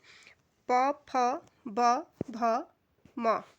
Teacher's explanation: ओष्ठ यानी कि होठों से जिनका उच्चारण होता है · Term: ओष्ठ ध्वनियाँ